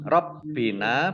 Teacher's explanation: Rabbina, baknya dibaca double, ada tasdidnya. Dan nun fathah alif mat tobi'i panjang 2 harokat.